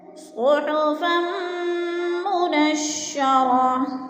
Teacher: صحفا منشرہ، منشرہ، منشرتن، 2 زبر تنوین گولتا ہے، وقف کی صورت میں اس کو 2 زبر نہیں پڑھیں گے بلکہ گولتا کو ساکن کر کے پڑھیں گے